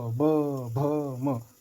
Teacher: दोनों होंठ लड़ रहे हैं, इसलिए प, फ, ब को म को ओष्ठ से उच्चारण माना गया है, तो होंठ से, ओष्ठ से उच्चारण होता है।